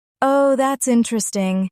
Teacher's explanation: If something surprised you, say, Oh, that's interesting. with rising intonation.